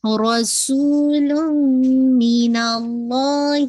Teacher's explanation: complete ادغام، تنوین کی آواز میم کے اندر مرج ہو گئی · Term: ادغام کامل